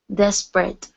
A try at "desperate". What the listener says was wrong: Very nice.